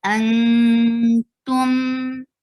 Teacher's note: ikhfa, and you are hiding and sound of noon, and you are going towards the makhraj of ta.